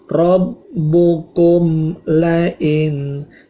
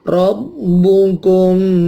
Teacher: Rabbukum la, ini idhar syafawi. Mim matinya, kumnya tidak dipanjangkan, tapi begitu kum bibir atas ketemu bibir bawah terkatup langsung dilepaskan untuk membunyikan lam.